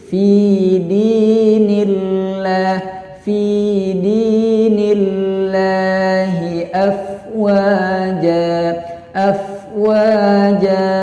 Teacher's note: hukumnya adalah lam tarkik, yaitu dibaca dengan bacaan yang tipis